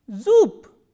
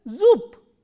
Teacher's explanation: when a voiced consonant comes in the end, it is pronounced as its voiceless counterpart, which is p. So, that is why zoop, b has been pronounced as zoop. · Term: devoicing of the final consonants